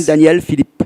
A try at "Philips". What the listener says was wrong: Philips. Non, mais il ne faut pas mettre le mot apostrophe. P-H-I-L-I-P-S, tout simplement. Philips. Philips. S à la fin.